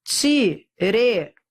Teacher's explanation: E é um ditongo decrescente. Porque eu vou da vogal para semivogal. Depois, e um hiato também do E para o O.